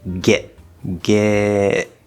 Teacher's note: connection it would normally be a glottal stop t get get we hear that cut off that's the glottal stop